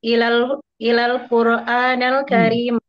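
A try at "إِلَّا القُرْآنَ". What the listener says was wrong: gitu tasdid illal Qur'ana.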